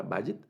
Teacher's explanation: el acento en esta primera, digamos en la primera sílaba